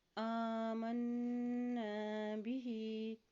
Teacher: حمزہ کے اوپر کھڑی زبر ہے، اس کو ایک حرکت لمبا ادا کریں گے